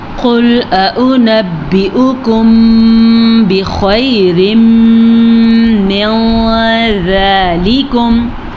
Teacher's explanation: ایک اخفاء شفوی یاد رکھے، جب بھی میم ساکن کے بعد حرف با آ جائے گا، یہ ہے میم ساکن، میم ساکن کے بعد حرف با آ جائے گا تو ہم دونوں ہونٹوں کو بند کر کے غنہ کریں گے، اسے کہتے ہیں اخفاء شفوی.